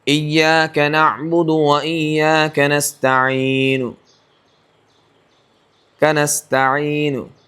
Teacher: نون کے اوپر جو پیش ہے وہ تھوڑا سا ہلکا ادا کرنا پڑے گا، لیکن قریب بیٹھنے والے سمجھ سکتے ہیں، دور بیٹھنے والے کو ایسا ہی لگے گا جیسے ساکن ہی کیا ہے، وقف بالاسکان ہی کیا۔ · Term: وقف بالروم